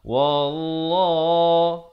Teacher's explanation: Lafzu jalalah dibaca tebal. Jangan kita baca walla. Itu nipis. Yang betulnya wallah dibaca 2 harakat.